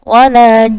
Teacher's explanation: belum memberikan ukuran mad yang sesuai dan juga belum mentasydidkan. Nah, ini sudah ada dua kesalahan.